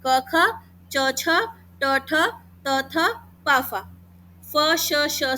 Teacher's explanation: जिन ध्वनियों का उच्चारण करते में वाइब्रेशन पैदा होती है, नहीं होती उनको अघोष कहते हैं।